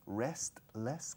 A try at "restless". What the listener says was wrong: Restless. La T no se dice. Restless.